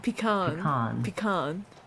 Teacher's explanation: The stress is on the second syllable, con.